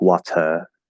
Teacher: in british english they have the other type of r which is more like a schwa sound